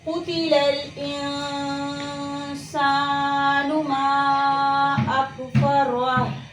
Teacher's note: आवाज़ जारी है और आवाज़ में एक किस्म की पस्ती पाई जा रही है, यानी एक कमज़ोरी पाई जा रही है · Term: हम्ज़